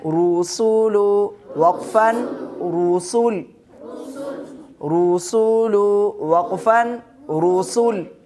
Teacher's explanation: پیش کو بھی وقف کی حالت میں ساکن کریں گے